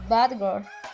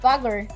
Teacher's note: I'm not saying bad girl because you don't need to pronounce the letter D. It is the D changed to the letter G